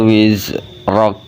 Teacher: Wa wada'na anka wizrak. Ro-nya dibaca tebal dan diikuti huruf kaf yang mati, maka kafnya dibacanya hamz keluar angin.